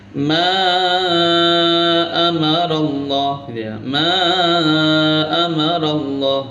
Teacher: Maka dari itu yang asalnya mad tabi'i bertemu hamzah, maka bukan mad tabi'i lagi, tapi menjadi mad jaiz munfasil. Panjangnya 3 alif atau 6 harokat.